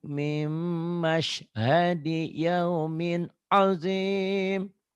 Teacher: mimnya agak rapat ya Makcik. Idgham bigunanya.